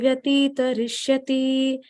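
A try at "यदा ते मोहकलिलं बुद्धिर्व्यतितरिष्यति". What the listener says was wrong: You read Vyatita. It becomes Dirgha. Vyatita. Vyatita. Vyatita. Rishyati.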